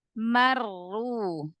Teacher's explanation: Ro tasydid berarti ro-nya ada 2. Ro yang pertama sukun, ro yang kedua di sini berharokat dhammah. Maka ro pertamanya dialirkan.